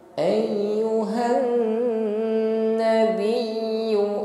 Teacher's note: Ayyuhan, nun tasydid, ghunnah musyaddadah. Dengungkan terlebih dahulu, tingkatan ghunnah di sini akmal, ghunnahnya paling lama.